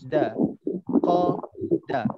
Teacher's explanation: cuba sebut qaf kat belakang, dah kat depan.